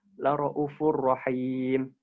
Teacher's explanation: Kalau riwayat Imam Syu'bah sesudah Hamzah dhammanya itu dibuang jadi la ra'ufur rahim.